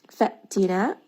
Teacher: hamza here is going to be again having shidda, meaning that you are going to abruptly stop the sound. Fa'tina, and it is going to have that jerkiness.